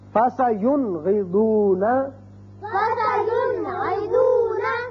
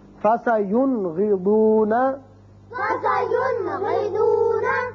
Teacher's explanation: نون ساکن کو ہم نے ظاہر کر کے پڑھا